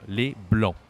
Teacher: There is what we call in French une voyelle nasale, like a nasal sound, okay? And so we need to use the nose to pronounce this. So here, this letter, we say en.